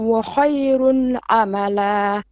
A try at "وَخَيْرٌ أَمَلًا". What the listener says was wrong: You're saying وخير عملا. There's a bit of ayn there. وخير أملا.